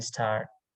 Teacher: So t is pronounced as a very strong t with aspirations in tar, and it's pronounced soft t without aspirations after another consonant in initial positions as in star